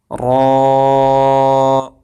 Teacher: دیکھیں زبان جو ہے، زبان کی نوک وہ اوپر والے جو دانت ہیں، دانتوں کے ساتھ جو متصل ملے ہوئے مسوڑے ہیں، مسوڑوں کو زبان کی نوک لگ رہی ہے، اور زبان کی تھوڑی سی پشت بھی لگ رہی ہے، تو را موٹا ادا ہوگا اور زبان اوپر اٹھے گی اور منہ کھول کے پڑھا جائے گا۔